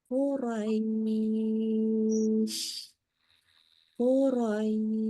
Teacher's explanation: Qurais yang dipanjangin bunyi i-nya ya bukan r-nya ya Jadi bukan Quraisy enggak gitu ya tapi Qurais nah itu